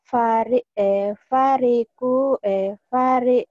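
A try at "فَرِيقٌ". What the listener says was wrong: Panjang firoku bah ini fi ya bukan fari. Ini kan ada matobinya Bu. firo. Firo.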